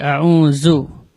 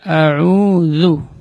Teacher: huruf za terletak di ujung lidah, yaitu tarful lisan. Ujung lidah berada di ujung gigi seri atas.